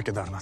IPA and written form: keːdaːɾnaːtʰ (Kedarnath)